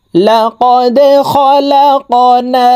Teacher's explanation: কফ হরফ কলকলার হরফ উপরের দিকে ধাবিত করে ধাক্কা দিয়ে উচ্চারণ করতে হবে।